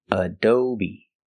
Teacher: The second syllable is O, long O, like go and show, ado. And the last syllable is B, long E like green beans, Adobe. The stress is on the second syllable, Adobe, Adobe.